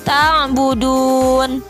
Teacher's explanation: fathah ia mati sebelumnya berharokat kasroh Wow mati sebelumnya berharokat domain di dalam keadaan waqaf maka dibacanya panjang sebanyak enam harakat atau tiga Alif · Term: Mad Arid lissukun, mad arid lisukun